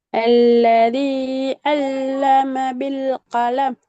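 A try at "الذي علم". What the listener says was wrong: உங்களோட வித்தியாசம் போதாது ஐனுக்கும். அந்த வித்தியாசத்தை எடுக்கணும். அந்த ஐனுக்குரிய இப்ப ஐன்னு உங்களுக்கு உச்சரிக்க தெரியாத அது கருத்தை போல. உங்களுக்கு ஐநு உச்சரிக்க தெரியும், நீ உச்சரித்து காட்டிக்கிறீங்க. சில இடங்களில் நான் மிச்சம் பெர்ஃபெக்டா சரின்னு போட்டிக்கிறேன். உதாரணத்துக்கு அத்ததாங்கிறது 100% சரி, ஒரு பிரச்சனை இல்லை. ஆனா இந்த ஐன்ல வந்து 100% கூட சரியா வருது இல்லை, வித்தியாசம் இருக்குது.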